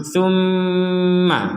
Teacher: jadi sama-sama Nun bertasdid dan mim bertasdid dibaca dengan dengung